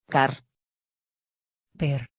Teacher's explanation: Ces deux lettres ne se prononcent pas tout à fait comme en français moderne, le R est généralement prononcé roulé, comme dans certaines formes de vieux français, comme en espagnol, et le N est détaché de la voyelle qui précède.